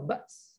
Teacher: kalau berhenti kat ba's, sin tu mati dia kena bunyi juga tau ba's. Ba's kan, wahinal, jangan wahinal ba', sin tu tak bunyi, hilang. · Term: sin mati